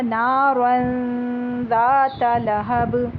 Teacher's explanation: یہ ہم نے پہلے بھی اس طرح پڑھا ہے نا، میں نے آپ کو بتایا تھا جیسے ہم بولتے ہیں پنک، تو پنک بولتے ہوئے ہم این کے لیے پوری طرح زبان اوپر نہیں لے کے جاتے، بس آپ نے یہاں پر وہ والا غنہ کرنا ہے کہ اس میں آپ نے زبان اوپر نون کے لیے نہیں لگانی، بس ناک میں سے آواز لے کے جانی ہے. تو یہ ہو جائے گا نارن ذات لہب.